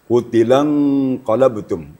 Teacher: Jadi, caranya ee harus ada bunyi eng-nya. Kemudian ng-nya tebal sedikit karena disambut oleh huruf qof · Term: ikhfa hakiki